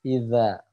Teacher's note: huruf z Itu adalah makhrojnya ujung lidah bertemu dengan ujung gigi seri atas